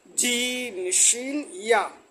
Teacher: জিহ্বার মধ্যখান তার বরাবর উপরে তালুর সঙ্গে লাগাইয়া উচ্চারিত হয়